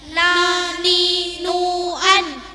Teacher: antara pucuk lidah dan gusinya dua gigi depan bagian atas. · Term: nun